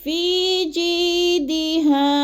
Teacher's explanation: فی کو تھوڑا سا کھینچنا ہے کیونکہ ادھر یا مدہ ہے. الف یا ساکن سے پہلے فا کے نیچے زیر ہے، تو ادھر یا مدہ 1 سے 2 الف کے برابر اس کو لمبا کر کے پڑھنا ہے.